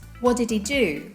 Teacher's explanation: Many times pronouns are function words and as such they reduce. In this case it means that they drop a sound, the H. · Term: reduction